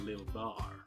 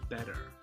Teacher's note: All I've done is, rather than doing my T's, I've turned them into a D sound.